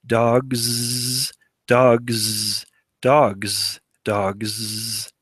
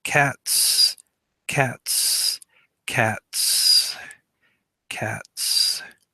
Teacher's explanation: Now that's actually two different phonemes. In dogs, dogs, dogs, I'm making a z sound, z. In cats, I'm making an s sound, right? So I've got two different phonemes because of assimilation.